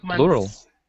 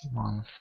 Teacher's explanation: Okay, months, so we don't actually say it. We say it's more like a ts instead of a th.